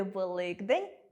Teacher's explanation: У слові “Великдень” дзвінкий [д] одзвінчує [к] і перетворює його на [ґ]